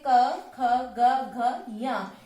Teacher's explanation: अ, क वर्ग, क वर्ग के क, ख, ग, घ, ञ, इन पांचों वर्णों तथा हा और विसर्ग का उच्चारण स्थान कंठ होता है